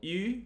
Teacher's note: the vowel e would be a high front vowel